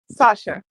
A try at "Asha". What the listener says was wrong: Asha, without the S.